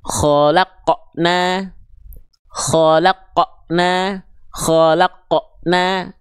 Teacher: Qof-nya ada ngeremnya, ada portal ngeremnya gitu. Bunyi pantulannya itu ngerem berat gitu rasanya. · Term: pantulannya tertahan